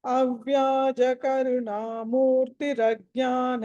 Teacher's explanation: ప్రజ్ఞాన దీర్ఘం లేదు ఆ నా కి దీర్ఘం లేదు